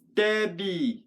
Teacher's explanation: So in the word stabby, the emphasis is on stab. Because if you did stabby, that'd be on the other syllable.